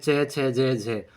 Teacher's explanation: च, छ, ज, झ, ये स्पर्श संघर्षी होते हैं · जो व्यंजन, जो वर्ण मुख से रगड़ खा के बाहर निकलते हैं वो संघर्षी, स्पर्श संघर्षी